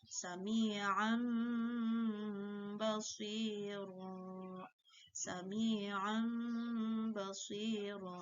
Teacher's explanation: Ketika kita melafalkan bacaan yang mengandung hukum bacaan iqlab, ya, maka berbunyi tanwin atau nun bertemu dengan huruf ba, di situ terselip ada huruf mim